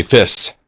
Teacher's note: if you were Greek and you were trying to say fish, you would say fiss because there's no sh sound in it